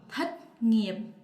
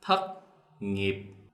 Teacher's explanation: In the North, they separate T and C, quite different. In the South, we pronounce the thất ending T sounds like a C. So the Southern, thất nghiệp.